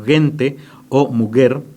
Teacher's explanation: la G y la J se pronunciaban de una manera más gutural